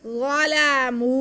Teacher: मीम पेश और व साकिन ये वाऊ मद्दा हो गया। मीम के बाद हम खींच लेंगे